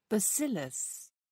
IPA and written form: bəˈsɪləs (bacillus)